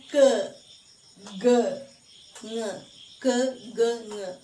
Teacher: back of the tongue is raised towards soft palate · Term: velar sounds